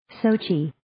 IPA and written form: 'soʊtʃi (Sochi)